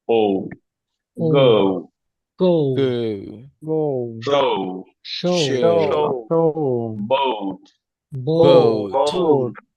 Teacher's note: এই ও ডিপথং এর শুরুর ভয়েলটা হচ্ছে ও